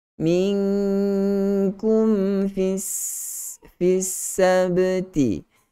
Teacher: Berikan hak huruf mim itu. Naikkan sedikit ke hidung. Ada sedikit sifat gunnah. Walaupun di sini bukanlah idgham ataupun ikhfa syafawi yang kita bacakan dengan gunnah.